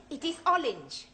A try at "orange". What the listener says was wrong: You really must work at those R sounds. Try saying, round the rugged rock, the ragged rascal ran.